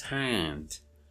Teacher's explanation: But If you want to make it narrow, it becomes hand. The A is nasalized.